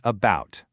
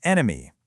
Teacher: They're all different letters on the page, but they collapse into that exact same weak uh sound. Why? Because they're in an unstressed syllable. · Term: schwah